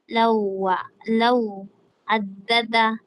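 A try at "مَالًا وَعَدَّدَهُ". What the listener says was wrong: hindi ito law addada. Lawa. Parang ganyan oh. Lam, law at saka wa. Law at saka wa, lawa. Bago mo idagdag ang addada. Lawa, idagdag mo itong addada. Bali, lawa addada.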